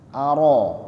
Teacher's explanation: Tapi dia mengucapkannya huruf tipis, disenyumkan sedikit bibirnya kemudian setelah huruf alif itu adalah huruf ra fathah, itu dibaca tebal, aro, tapi huruf alifnya jangan terikut tebal, aro.